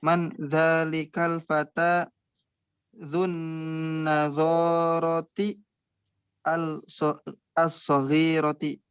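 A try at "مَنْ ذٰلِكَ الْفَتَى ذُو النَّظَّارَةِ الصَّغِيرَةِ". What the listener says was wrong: Nah, mumtaz.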